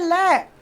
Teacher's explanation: ले का जब हम उच्चारण करते हैं ना बेटा, तो जो अपनी प्राणवायु है, ऑक्सीजन है, जो हवा है मुख से निकलने वाली, वो जीभ के बगल से, साइड से, पार्श्व भाग से निकलती है। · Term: पार्श्विक व्यंजन